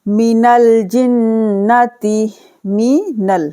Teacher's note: نون کو لام کے ساتھ ملائیں گے، بیچ میں جو خالی الف ہے نہیں پڑھا جائے گا